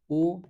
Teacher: ओ जैसे आप बोलोगे तो कंठ के साथ-साथ बट अपने ओष्ठ जो है वो भी इसके अंदर सिकुड़ रहे हैं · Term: कंठ ओष्टम